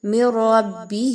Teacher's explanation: یہاں پر آپ نے ادغام کرنا ہے، یعنی آپ نے ایک حرف کی آواز کو دوسرے حرف کی آواز میں مکس کرنا ہے، مدغم کرنا ہے، لیکن غنہ کیے بغیر. میم کی آواز کو ڈائریکٹ را کے ساتھ ملائیے.